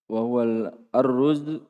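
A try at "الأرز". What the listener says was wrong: Tidak ditasdid roknya. Aruz.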